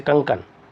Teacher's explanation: इसमें मुख से बहुत कम ध्वनि और नाक का से सबसे ज्यादा ध्वनि निकलती है इसी को कहते हैं अनुस्वार